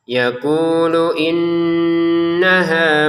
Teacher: nunnya bertasydid, mengikuti yang di depan wajib didengungkan